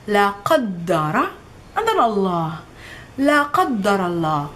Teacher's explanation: La, guttural sound qa, d, double the d, and the ra.